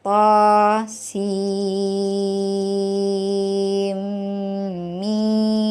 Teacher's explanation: Sin dibaca 6 harokat. Lalu di sana ada nun mati bertemu mim, dibaca idgham bi gunnah, tekan 2 harokat ya, dimasukkan dengan dengung. Lalu mim dibaca 6 harokat.